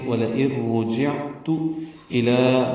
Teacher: واو لام جلدی سے پڑھیں گے، حمزہ یا کی شکل میں ہے، نون ساکن کی بعد را آنے کی وجہ سے ادغام ہو رہا ہے، ادغام کامل ہے